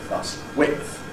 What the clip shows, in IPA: wɪʔθ